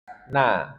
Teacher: Kemudian ada huruf nun. Ujung lidah dengan gusi 2 gigi seri atas.